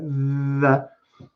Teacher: i have to touch my teeth with my tongue to get that sound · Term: the th sound